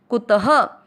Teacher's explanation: त में अ की मात्रा विसर्ग को ह पढ़ेंगे, कुतः। सुख के साथ आधा म, सुखम।